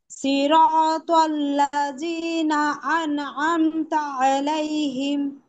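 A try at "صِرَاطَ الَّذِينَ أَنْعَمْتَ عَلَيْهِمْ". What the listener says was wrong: এই রিটা জিমের মতো হয়ে যাচ্ছে, জিব্বার আগে উপরে দুই দাঁতের আগে লাগানো রিনা, সিরাতাল্লাযীনা।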